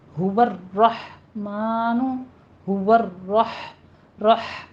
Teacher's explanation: کرنے ہیں، الا میں الف مد ادا کرنا ہے، هو الرحمن، را مفخم بھی پڑھی جائے گی اور اس پر تھوڑی سی تکرار ہوگی، صرف 2 بار ، هو الرحمن، هو رح، ہا وسط حلق میں چلی جائے · ہا وسط حلق میں چلی جائے گی